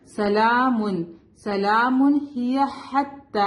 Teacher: ہا شارپ ہوگا، come from the middle part of the throat · ٹھیک ہے، لیکن ہم ملا کے پڑھیں گے تو ہم سلام، اور میم تنوین یہاں پہ ظاہر ہوگا، تنوین کا نون یہاں پہ ظاہر ہوگا کیونکہ تنوین کے بعد کیا ہے، ہائے، ہا حروف حلقی ہے